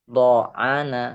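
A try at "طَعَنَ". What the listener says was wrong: to, gak ada titiknya, gak ada titiknya. To,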